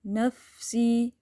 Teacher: فا ساکن پہ ہمس ہے، جیسے پھونک مارتے ہیں نا ہوا میں کینڈل کو، تو اس طرح آواز آتی ہے۔